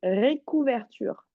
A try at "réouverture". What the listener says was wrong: Est-ce que tu vois un C dans le mot? Redis-moi le mot.